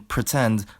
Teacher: both the P and the T are aspirated